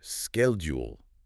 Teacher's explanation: the H is silent and the D and U kind of blend together to make a soft J sound. So you get schedule in the U.S.